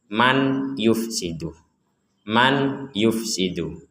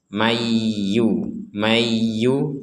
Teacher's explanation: yufsidu man yufsidu Nah karena Nun ini kita gabung dengan ya maka nunnya ini dimasukkan huruf Ya seakan-akan nunnya sudah tidak ada dan langsung masuk ke ya kita bacanya mayyu mayyu cuman menggunakan dengung ya plus dengung Mayu